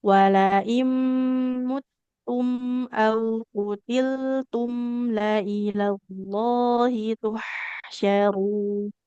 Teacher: Tapi terlalu lama juga enggak boleh Bu kelamaan ya. Mim itu mengalir suaranya dia tidak terlalu lama.